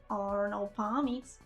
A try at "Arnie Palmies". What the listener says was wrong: Arnie Palmies. You said Arnold Palmies. Arnie.